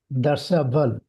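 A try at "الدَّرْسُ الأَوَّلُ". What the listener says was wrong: আদ-দারসুল আউয়াল। হ্যাঁ, আদ-দারসুল বলতে হবে, শুধু দারসেল আউয়াল, দারসে আউয়াল বলা হবে না। আদ-দারসুল আউয়াল,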